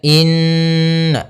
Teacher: Inna di sini ada hukum tajwid berupa bacaan ghunah gunna yaitu kita membaca dengan menahan suara nunnya maka Inna baru dilepas Inna jangan langsung dibaca Inna nah ini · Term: gunnah